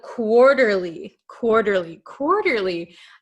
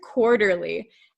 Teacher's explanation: if you'll notice quarterly, this T is gonna become a flap T